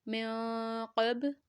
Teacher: نون ساکنہ کے بعد قاف ہے. من 2 سیکنڈ تک لمبا کریں گے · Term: اخفا